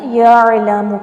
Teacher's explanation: جھٹکا نہیں دینا، یعلم کر کے نہیں پڑھنا، یعلم پڑھنا ہے، عین جو ہے وہ حلق سے نکلتا ہے تو نکالنے کی کوشش کریں